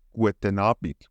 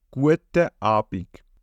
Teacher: we place this connecting N at the end of the first word and consequently can pronounce both words together without a pause